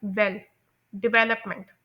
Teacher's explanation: इस वेल को बोलते हुए मेरी ड्यूरेशन भी ज़्यादा थी, टाइम ड्यूरेशन, और इस पर एक एम्फोसिस आ रहा है, डे, और उसके बाद अपमेंट। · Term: सेकंड सिलेबल